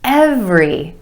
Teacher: two syllables emphasis on the first syllable and the vowel sound every every every day I see her